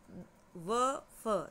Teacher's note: दंतोष्ठ व और फ, दांत पर भी और नीचे का होठ भी